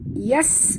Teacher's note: bunyikan sofir pada bunyi sin, pada huruf sin yang mati.